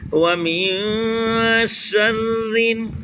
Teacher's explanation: را پر زیر ہے، پور نہیں کریں گے، باریک کریں